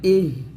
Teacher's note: এটা হালকা করে বলবেন বাতাস বের করে